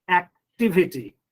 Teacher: you have to put stress on the third syllable from the end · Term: word stress